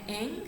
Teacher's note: there is a constriction between your back part of the tongue and your velum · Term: velar nasal